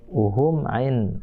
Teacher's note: mim mati ketemu ain, itu nggak boleh dengung. Itu namanya izhar syafawi.